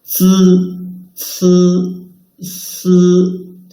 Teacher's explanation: When pronouncing 思, the front part of the tongue tip stays away from the inner surface of the upper teeth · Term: dentals